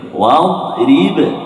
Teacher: Jangan lantun sebab dad bukan huruf qalqalah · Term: huruf dad